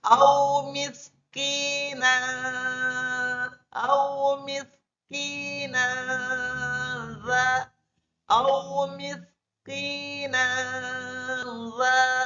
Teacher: Fathatain bertemu dengan huruf za. Jadi huruf Fathatainnya itu ketika dimasukkan ke huruf za harus samar-samar.